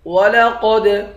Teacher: قاف کو دال کے ساتھ ملا کر پڑھیں گے، قاف کو موٹا پڑھیں گے، دال پر قلقلہ کریں گے۔ را کو بھی موٹا پڑھیں گے، حمزہ کے اوپر کھڑا زبر ہے، اس کو ایک الف کے مقدار کھینچ کر پڑھیں گے۔